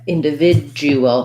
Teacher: the end syllables are short and unstressed